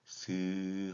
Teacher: 공기의 흐름을 완전히 막는 것이 아니라 통로를 좁혀 스 하고 마찰을 내면서 내는 소리를 마찰음이라고 합니다